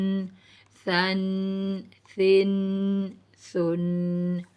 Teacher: بالکل نرمی کے ساتھ ہم نے اس کو ادا کرنا ہے. زبان کی نوک کو اوپر کے دانتوں کے ساتھ ہم لگائیں گے تو ثا ادا ہوگا. ثا دو زبر ثن، ثا دو زیر سن، ثا دو پیش سن، ثن سن سن.